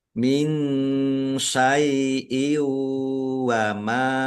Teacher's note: Kasroh tanwin bertemu dengan huruf wawu, bacaan idgham bi gunnah masuk dengan mendengung, yaitu langsung masuk ke huruf wawu dan mendengung wawu ditahan biar tampak mendengungnya.